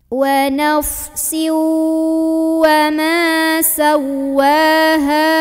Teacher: Jadi kayak ada lonjakan nada gitu, ya. Ha dari tenggorokan bawah, bawahnya bergetar dan panjangnya cukup 2 harokat.